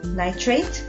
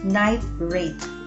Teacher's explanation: the stoppage in the word nitrate is between the vowel sound I and consonant T while the stoppage in the word night rate is between the words night and rate because of this it gives the difference in meaning the word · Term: juncture